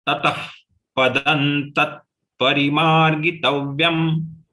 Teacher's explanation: So here the visarga, anuswar, good combination. All the 3 visargas are having pronunciation like fa, tatah. So you have to exhale your air from the mouth.